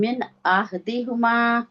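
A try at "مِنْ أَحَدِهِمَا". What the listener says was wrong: अच्छा, ये मिन होगा कि मिन होगा? नहीं नहीं, मतलब जेर जो है मजहूल नहीं पढ़नी ना।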